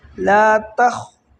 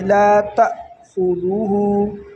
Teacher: یہ لا تأخذہ جو ہے اس پر یہاں پر مسٹیک کیا کرتے ہیں لوگ، یہاں پڑھتے ہیں لا تأخذہ، لا تخ، یہ تا کو خا کے ساتھ ملاتے ہیں۔ تا کو خا کے ساتھ نہیں ملانا بلکہ اس کو الف کے ساتھ ملانا ہے